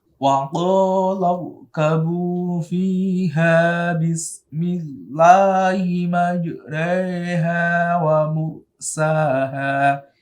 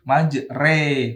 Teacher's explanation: Imalah condong. Yaitu mencondongkan fathah pada kasroh dengan kira-kira ukuran 2 harokat panjangnya atau 1 alif.